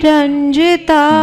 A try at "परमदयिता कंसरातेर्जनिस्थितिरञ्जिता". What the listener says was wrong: Jani has to go up.